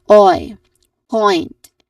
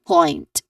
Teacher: Next syllable is point, which has a clear oi diphthong sound. So the diphthong sound again is oi, point, and then a consonant cluster at the end.